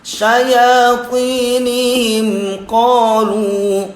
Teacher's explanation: Syaya mad asli juga, ti mad asli juga, syayatinihim qalu, him itu kan mim sukun menghadapi qaf, namanya izhar syafawi. Jangan namanya izhar itu jelas, jadi enggak syayatinihim qalu, enggak terlalu lama, enggak juga dikolkolahkan syayatinihim tapi tetap langsung syayatinihim qalu ya.